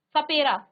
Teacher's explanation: जब इसका आप उच्चारण करेंगे तो स बोलेंगे सपेरा तो आपकी जीभ आपके दांतों को स्पर्श करेगी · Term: दंत्य स